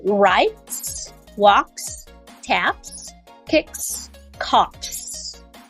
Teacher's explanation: These are unvoiced consonant sounds. The K, F, P, S, and T. So those are the unvoiced consonant sounds. So they just come with just simply the S sound. So because S is also unvoiced.